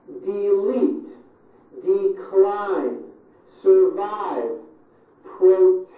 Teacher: two syllable words that are stressed on the second syllable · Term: syllable stress